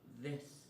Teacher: path the fourth fricative sound is the which is voice cognate the sound is made with the tongue between the teeth